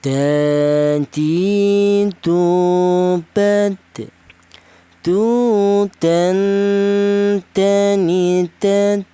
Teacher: Huruf dal ini keluarnya huruf berasal dari ujung lidah menyentuh pangkal gigi sari bagian atas